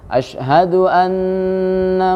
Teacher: kita usahakan teman-teman supaya di nun ini ada gunnah ya. Asyhadu anna ya, maka itu kalau bisa dimaksimalkan.